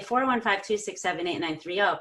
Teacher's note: You need to group the numbers logically. So you say 415 in one breath of air, 267 in another breath, 8930. Well, I mean, you could say 8930, whatever, but the point is you have 3 thought units.